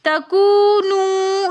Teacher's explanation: ولا تکونو کے اندر بھی ولا کے اندر الف مدہ ہونے کی وجہ سے ہم نے ولا ایک الف کی مقدار کھینچ کر پڑھا۔ تکونو میں واو مدہ ہونے کی وجہ سے ہم نے تکونو دونوں واو کو ایک ایک الف کی مقدار کھینچ کر پڑھا